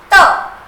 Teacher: ऐसे अक्षर या वर्ण जो कि आप अपने मुख से जब निकालते हैं तो आपकी जिह्वा आपके दांतों को टच करती है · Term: दांत वाले शब्द